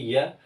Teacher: तो यह का उच्चारण स्थान तालु है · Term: अर्थ स्वर